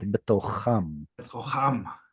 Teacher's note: Without the weak dagesh. So it has that gravelly sound.